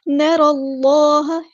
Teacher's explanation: ہے، حمزۃ الوصل ہمارا ڈراپ ہو جائے گا، نر اللہ لام اللہ کا جو لام ہے وہ پورا ادا کریں گے کیونکہ اس میں جلالہ تفخیم ہو رہا ہے